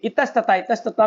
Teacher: इतः में जो विसर्ग है, विसर्ग को क्या हो जाता है, स हो जाता है, दंत्य स